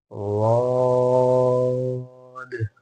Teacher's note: जबान के जो किनारे हैं उन्हें ऊपर के दांतों की जड़ में भी लगाना है